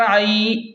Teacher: عین یا زبر عی، یہاں پر یا لین ہے تو اسے جلدی اور نرمی سے پڑھیں، اور عین حروف حلقی میں سے ہے تو اسے حلق کے درمیان سے صاف نکالیں